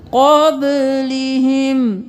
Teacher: यहाँ पे इख्फा करेंगे, क़ब, क़ाफ मोटा, बा क़लक़ला